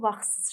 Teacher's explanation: s t yanaşı gəldikdə özündən sonra samit gəlsə tələffüzdə t düşür. Olur vaxtsız şəklində.